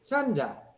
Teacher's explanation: Yo tengo la N delante de D. Acá no tengo velar. No tengo porque D, porque esta D es alveolar.